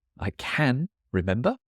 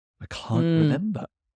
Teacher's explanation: so in the British accent the negative is way is way longer